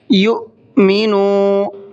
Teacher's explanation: یو پڑھتے ہوئے ہا کی آواز نہیں نکلنی چاہیے · منو کے نون کو کھینچنا ہے، اس لیے کہ یہاں پر واو مدہ کا قاعدہ ہے، واو ساکن سے پہلے پیش ہے۔